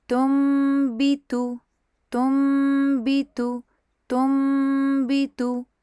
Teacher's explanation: ہونٹوں کو میم سکون کے لیے بند کریں گے، 2 کاؤنٹس غنہ کریں گے، اور اس کے بعد اس کو با کسرہ کے لیے کھولیں گے۔ ہونٹوں کو بہت زیادہ کس کے نہیں دبانا، نہ ہی ان کے بیچ میں گیپ ہونی چاہیے، اور آپ نے جو ہے بس 2 کاؤنٹ غنہ کر کے پھر اس ورڈ کو با پڑھ کے پھر تا پڑھ کے مکمل کر لینا ہے۔